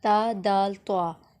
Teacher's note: تینوں کا مخرج ایک ہی ہے، یعنی زبان کی نوک